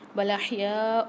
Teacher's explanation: یا کے ساتھ الف اور مد دونوں آ رہے ہیں، 5 سے 6 الف کی مقدار کھینچ کے پڑھیں گے